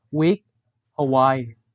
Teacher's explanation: The description of w is voiced labial velar approximant.